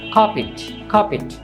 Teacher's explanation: Country কার্পেট, এখানে দেখুন আর এর পরে কি আছে কনসোনেন্ট পি, কাজে এখানে আরটা উচ্চারণ হবে না, তাই আমাদের সঠিক উচ্চারণ হবে কার্পেট কার্পেট।